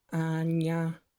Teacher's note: the palatalization happens at the back of your mouth with your tongue